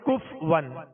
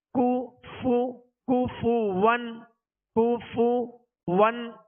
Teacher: اس کو بعض لوگ پڑھتے ہیں کف ون، تو کف ون نہیں، کاف پر پیش ہے، فا پر پیش ہے، دونوں کے پیش یہ صحیح سے ادا کریں گے، ہونٹوں کو گول بھی کریں گے اور بغیر کھینچے بغیر جھٹکا دیے معروف ادا کریں گے